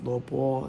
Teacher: it's second tone, but when you say with lo bo, it sounds like a first tone.